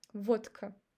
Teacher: But we pronounce t instead of d.